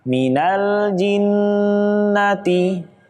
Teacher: Nun tasydid juga tidak ditahan harusnya ditahan